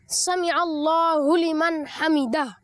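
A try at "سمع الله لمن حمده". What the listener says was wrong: جی ہاں, آخر میں ہا بھی ہے, حمیدہ نہیں کہیں گے.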